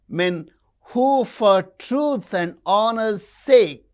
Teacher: Men, truth, honor, sake. These are stressed.